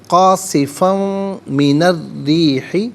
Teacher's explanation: قاصفن من الریح، قاصفن میں فا پر دو زبر کی تنوین، پھر اس کے بعد من کی میم آ رہی ہے، تو میم کے ساتھ ملا کر میم کی آواز کو غننے کے ساتھ ادا کریں گے. یہاں پر بھی یرملون کا جو قاعدہ ہے وہ اپلائی ہوگا. · اسے الریحی کی را کے ساتھ ملائیں گے، اور را کی آواز کو ادا کیا جائے گا، لام کی آواز ادا نہیں کی جائے گی. من الریحی نہیں، من الریحی، را کے نیچے زیر ہے، را کو باریک کر کے پڑھیں گے.